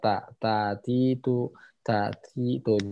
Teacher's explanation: jadi tempelin ke makhraj, nggak usah dipaksain ada aliran udara yang keluar. Ya, kalau makhrajnya benar ada aliran udara keluar.